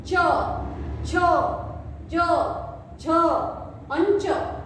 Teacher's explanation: हमारी जो जीवा है, वो जीवा के बीच में वाला हिस्सा ऊपर जाकर चिपकता है। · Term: तालव्य